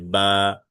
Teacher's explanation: বা হচ্ছে দুই ঠোঁটের ভিজা অংশ থেকে উচ্চারণ হবে